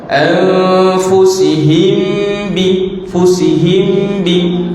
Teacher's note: Mim mati bertemu dengan ba juga dengung. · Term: ikhfa syafawi